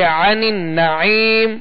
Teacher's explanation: عین کو وسط حلق سے ادا کریں گے، نون مشدد پر غنہ کریں گے. پھر آگے عین ہے، آگے یا مدہ ہے، لہذا ان تمام قواعد کا خیال رکھتے ہوئے ہم اس کی مشق کریں گے تو آسانی ہوگی.